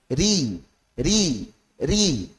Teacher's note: ro saat tipis maka menyimpang ke makhrajnya huruf lam